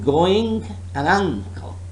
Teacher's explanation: Note that the n sound in this word is not made at the alveolar ridge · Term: eng